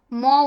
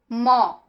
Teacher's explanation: তারপরে দেখো ম দুটা ঠোট লাগছে। দুটা ঠোটের সাথে ঠোট লেগে ম উচ্চারিত হচ্ছে। ম তাহলে এটা হচ্ছে অষ্ঠ বর্ণ।